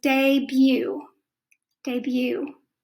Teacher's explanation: you don't hear the t just goes debut